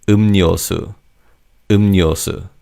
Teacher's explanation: in terms of pronunciation, the 리을 in the second syllable changes to 니은. So it's not 음료수, it's 음료수, 음료수.